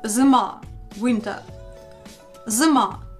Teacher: In the unstressed position, U becomes a bit close to E.